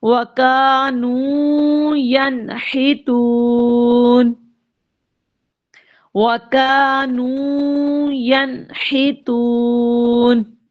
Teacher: یہاں پر نون ساکن کے بعد ہا آ رہا ہے جو کہ حروف حلقی میں سے ہے. غنہ نہیں کریں گے بلکہ ظاہر کر کے پڑھیں گے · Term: اظہار